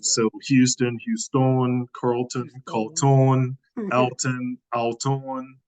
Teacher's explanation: We have this tendency in Kouri-Vini for English names that end in on, we elongate for whatever reason.